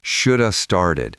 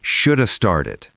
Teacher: The words link together. We don't say should have started. It's one long snake of sound. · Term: reduction